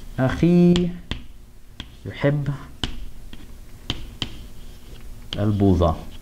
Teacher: The '-ee' sound is strong enough that it swallows up the 'waaw.'